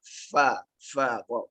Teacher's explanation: Gigi atas bersatu dengan bibir bawah. Dan keluarkan angin yang banyak.